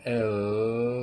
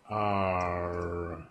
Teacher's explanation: the L, the tongue is behind the teeth on the palate, where the R is flat. So you have L, and the tip of the tongue is held there.